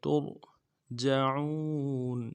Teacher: تا کو را کے ساتھ ملانا ہے، را کو موٹا ادا کریں گے